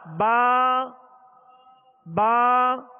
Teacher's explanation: آواز اور منہ کھول کر اور ایک الف کی مقدار میں اسے کھینچیں گے، یعنی 2 حرکت کے برابر. با با واو پیش بو، با یا زیر بی، با بو بو. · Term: حروف مدہ